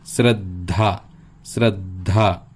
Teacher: धाचा उच्चार स्पष्ट येतो आणि शेवटी येतो, आणि दचा उच्चार हा कमी येतो, तो मध्यभागी येताना दिसतो